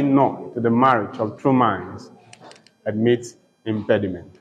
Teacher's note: the pattern for this poem is unstressed, stressed, unstressed, stressed, till the end of the line